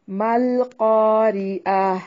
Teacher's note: القاریہ، ملقاریہ، ٹھیک ہے، ملقاریہ، ما الف مدہ ہے، لام کو ہلانا نہیں ہے، قاف موٹا پڑھیں گے اور یہ الف مدہ ہے، را کو باریک پڑھنا ہے، عین کو واضح نکالنا ہے، اور گول تا جسے تائے مربوطہ کہتے ہیں، وقف کی صورت میں ہائے ساکنہ میں بدل جائے گی۔